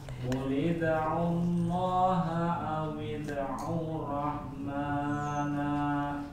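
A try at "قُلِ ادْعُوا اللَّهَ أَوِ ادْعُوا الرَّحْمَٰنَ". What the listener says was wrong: Nah, nanya jangan panjang. Rahmana.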